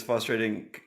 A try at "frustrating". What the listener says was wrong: There's an R.